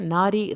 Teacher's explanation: रा को आपने पतला पढ़ना है